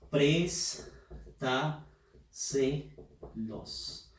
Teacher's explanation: La fuerza de voz está en la sílaba pres. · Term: sobre esdrújula